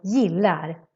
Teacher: the g sounds more like a y sound